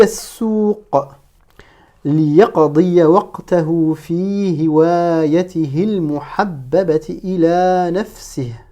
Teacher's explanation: Donc là aussi, j'ai fait une liaison entre dans hiwayatihi, le ha final, je l'ai prononcé, et je suis passé directement à la prononciation du lam avec le soukoun.